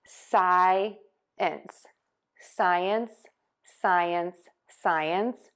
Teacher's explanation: think of the sounds S-I, sigh, and then we're going to end short I, ins. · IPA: ˈsaɪəns